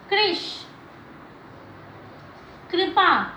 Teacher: इसके बाद री ऋषि की मात्रा, री ऋषि की मात्रा जो होती है इस तरह से होती है। याद रखिएगा, री की जो मात्रा है इसका जो उच्चारण है री है, ना कि र। जैसे कृष, कृपा।